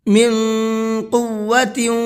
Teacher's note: من کے نون کے اندر اخفا کریں گے، اس لیے کہ نون ساکن کے بعد میں قاف آ رہا ہے اور قاف اخفا کے حرفوں میں سے ہے۔